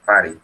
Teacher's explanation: Prácticamente como que la T fuera muda